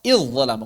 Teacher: zal bertemu dha itu diidghamkan. Idh zalamu bukan idh zalamu tapi langsung ke dha idh zalamu.